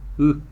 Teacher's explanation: Agora o Y, que é a vogal mais característica da língua e das línguas tupis guaranis em geral, ela tem um som intermediário entre I e U. Os lábios ficam na posição de I e a língua na posição de U